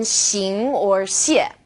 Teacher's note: this sound is somewhere in the middle of SH and S.